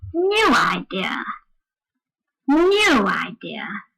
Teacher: the word idea, which is not important, is said on a very low note without any stress at all